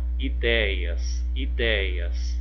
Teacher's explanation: Olha, o DEI. O DEI é o que? É a sílaba tônica. Foi a última? Não, foi a penúltima. Então, nesse caso, eu tenho uma paroxítona.